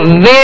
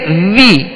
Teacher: جب زیر آئے گی تو آواز کو گرانا ہے، کھینچنا نہیں ہے، معروف پڑھنا ہے۔ تو وے نہیں، وی، آواز کو گرا کے، اور جب پیش ادا کریں گے تو ہونٹوں کو گول کرنا ہے، اسے کھینچنا نہیں ہے، بغیر کھینچے، بغیر جھٹکا دیے معروف پڑھنا ہے۔